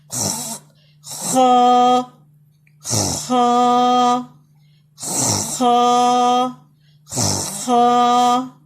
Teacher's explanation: ہونٹ گول نہیں ہوں گے، یہ ہمارا فرسٹ ہیوی لیٹر آ رہا ہے، اس میں ہونٹ گول نہیں ہوں گے. آپ نے بلندی کی طرف منہ کو کھولنا ہے.